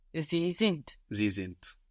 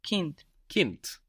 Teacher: again we have the hard version of the D sounding like a t